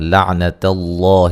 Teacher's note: لفظ اللہ کو موٹا ادا کریں گے، اس سے پہلے زبر ہے اور یہ مد اصلی ہے۔